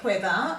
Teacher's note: you can hear the h after that w and you can feel the air when you say it if you hold your hand over your mouth now there are